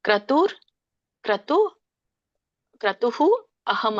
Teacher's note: ಕ್ರತುರಹಂ ಅಂದ್ರೆ ಬಿಡಿಸಿದಾಗ ಕ್ರತುರ್ ಕ್ರತು ಕ್ರತುಹು ಅಹಂ ಅಂತ ಬರುತ್ತೆ. ರ ಇದ್ದದ್ದು ವಿಸರ್ಗಾಗಿ ಪರಿವರ್ತನೆ ಆಗುತ್ತೆ.